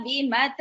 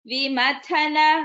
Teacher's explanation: The next word Vimathana. Tha is Mahaprana.